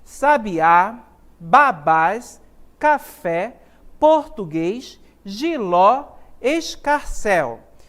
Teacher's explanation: observem que aqui nessas palavras a sílaba tônica está ao final